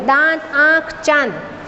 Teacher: चंद्रबिंदु मुंह और नाक दोनों से हवा निकलती है